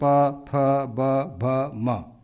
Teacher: ओठ पे आ जाइए प प, दोनों ओठ मिलते हैं